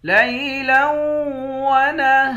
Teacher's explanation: لام کو واو کے ساتھ ملا کر واو پر غنہ کریں گے، ہا کے بعد الف ہے، الف حروف مدہ ہے، 1 الف کے مقدار کھینچیں گے، آخر میں را ہے، اس را پر جب وقف کریں گے 2 زبر کی تنوین ہے، 2 زبر کی تنوین میں جب وقف کرتے ہیں 1 زبر بن جاتا ہے اور اس را کو موٹا بھی پڑھیں گے۔